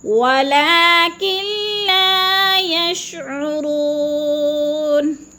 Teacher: ولکن لا یشعرون، ولیکن نہیں پڑھنا، نون ساکن کو نہیں پڑھنا، کاف کو لام کے ساتھ ملا کر ادغام کرنا ہے